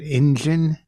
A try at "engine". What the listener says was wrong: Engine. E-N, not engine. Not I-N. E-N.